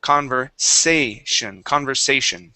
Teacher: This S in the middle is an unvoiced S.